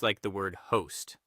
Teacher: Think of that clear, long O sound in host, followed by a clean ST at the end. Keep it crisp and unhurried.